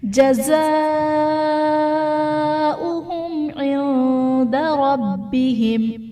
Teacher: मीम साकिन के बाद हर्फ बा और मीम के अलावा आइन है तो यहाँ पर इज़हार शफवी का कायदा होगा, यानी मीम साकिन में हम गुन्ना नहीं करेंगे। इंदा में नून साकिन के बाद हर्फ इख्फा में से दाल है तो यहाँ पर इख्फा का कायदा होगा, यानी नून साकिन में हम गुन्ना करके पढ़ेंगे